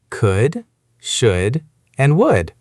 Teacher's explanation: Remember, no L sound.